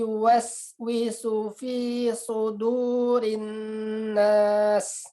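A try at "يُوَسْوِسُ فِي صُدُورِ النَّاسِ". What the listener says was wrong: Di sini huruf so-nya kurang tebal. Huruf so-nya kurang tebal dan kurang jelas perbedaannya dengan su di sini. Di sini sin harokatnya dhammah, di sini so harokatnya dhammah. Bedakan, harus jelas perbedaan pengucapan huruf sin yang dhammah di sini dengan huruf so yang dhammah di sini. Jangan sampai sama. Yuwaswisu fi su, dengan yuwaswisu fi su, ya. Jangan sama, tapi harus beda ya. Su dengan u, su dengan u.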